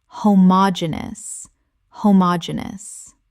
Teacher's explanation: Five syllables with the stress on the third